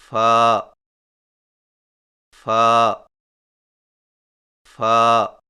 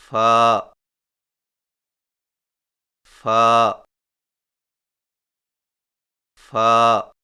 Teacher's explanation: فا کی ادائیگی میں سامنے والے اوپر کے دو دانتوں کے سروں کو نچلے ہونٹ کے گیلے حصہ پر لگا کر باریک آواز میں پڑھیں، یعنی فا فا فا.